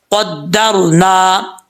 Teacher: قدرنا، را ساکن ہے، را ساکن سے پہلے زبر تو را پر پڑھا جاتا ہے، اس کو موٹا پڑھیں گے